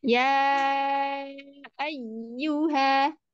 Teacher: ya yang ditasdid, ditahannya jangan terlalu lama